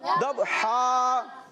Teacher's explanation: تنوین کو ہم ایک الف سے بدل دیں گے اور ایک الف سے بدل کر پڑھیں گے تو اس کا ایک الف والا ساؤنڈ پیدا ہوگا